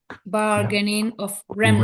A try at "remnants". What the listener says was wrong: Remnants. Yep.